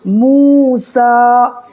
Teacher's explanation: واو پیش مو، سین کھڑا زبر سا، موسا، واو ساکن ہے، واو ساکن سے میم کو پیش ہے تو وہ مدہ ہوگا، اس کو بھی ایک الف برابر کھینچ کر کے پڑھیں گے